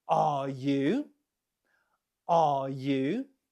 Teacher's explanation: add a falling and then Rising intonation pattern